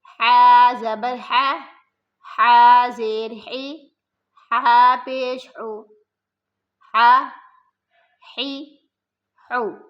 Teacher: یہ حلق کا جو درمیانی حصہ ہے نا، وہاں سے ہا ادا ہوگا۔